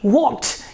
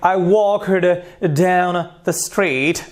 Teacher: if this K sound, if this is unvoiced, you will pronounce this ED with a T sound.